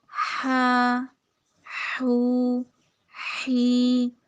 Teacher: ہا میں سانس کی آواز کو جاری کرنا ہے